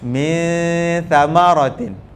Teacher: Lidah tu tak duduk di tempat tha waktu kita mendengungkan dia. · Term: ikhfa